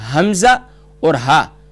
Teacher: bottom of throat کی جانب یعنی سینے کی طرف والا اقصی حلق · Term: حروف حلقیہ